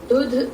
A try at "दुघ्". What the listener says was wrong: दुघ The print is a little off, but you can see that in Gha the line is together, and Dha it is standard.